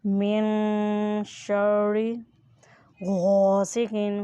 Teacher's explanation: غین کو پر یعنی موٹا ادا کریں اور ساتھ الف ہے اس لیے اسے مد بھی کریں۔